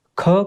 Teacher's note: ख के उच्चारण करने में क्या है बच्चों, अधिक वायु